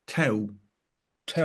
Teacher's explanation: So the L is basically almost dropped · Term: vocalized L